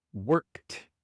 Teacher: La e no se pronuncia y la d se pronuncia como t